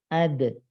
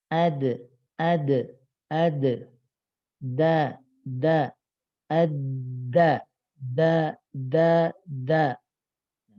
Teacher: D ujung lidah dengan langit-langit depan. Kalau dal ujung lidah turun ke bawahnya lagi ke gusi gigi seri atas.